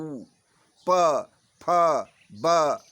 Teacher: जो दांत और ओठ, जो ओठ से बोला जाए, उपपद्मिया नाम ओष्ठ ऊ, देख रहे हैं ऊ बोलने में हमारे होठों की जरूरत पड़ती है ना। ऊ प फ ब दोनों होठ सट रहे हैं और अलग हो रहे हैं तो उससे प का उच्चारण निकल रहा है। इस प्रकार उपपद्मिया नाम ओष्ठव कहा जाता है, इसलिए उनको ओष्ठ्य वर्ण कहा जाता है।